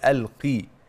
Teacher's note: القاف المكسوره دي ادنى مرتبه في التفخيم بس حضرتك ما تخليهاش كاف ما تقوليش القي الكي دي غلط